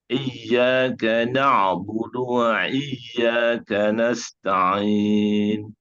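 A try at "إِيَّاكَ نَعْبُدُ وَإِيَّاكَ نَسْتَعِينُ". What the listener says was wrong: Jangan buduai. Pakai hamzah ya, buduai.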